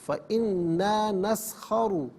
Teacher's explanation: نسخرو میں را پر پیش ہے، را کو پر کر کے پڑھیں گے